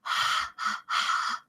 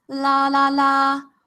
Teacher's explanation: one is only air and the other is using your voice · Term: voiced and unvoiced